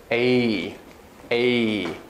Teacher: this is really a double vowel it's an e plus an e and they glide together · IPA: /eɪ/